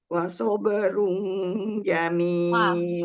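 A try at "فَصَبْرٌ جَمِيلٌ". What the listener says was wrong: Bukan wa. Fa sabr.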